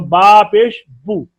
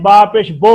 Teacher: एक तो ये ध्यान रखना है कि आवाज मारूफ हो, वाओ मद्दा की आधी आवाज हो, बा पेश बू, बा वाओ मजहूल की ना हो, या मजहूल की ना हो।